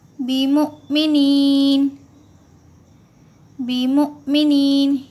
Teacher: حمزہ ساکنہ کے پڑھنے میں جھٹکا ہوتا ہے۔